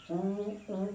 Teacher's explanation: उ का उच्चारण स्थान है ओष्ठ।